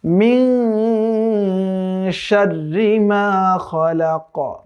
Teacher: এই নুন সাকিনে কিন্তু এখানে ইখফা এর গুন্না হবে।